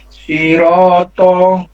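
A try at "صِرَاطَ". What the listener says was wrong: Oh iya, jadi to-nya ya. Untuk to-nya ini berarti karena dalnya itu tadi, karena huruf dalnya belum ketemu makronya sehingga pengaruh juga ke huruf to-nya. Karena to dan dal itu keluar dari satu makhraj.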